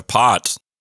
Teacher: even though it's an O there, the sound is more like an ah